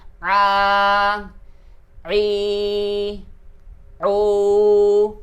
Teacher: keluarnya itu di tengah tenggorokan dengan suara yang khas di tengah tenggorokan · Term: huruf ain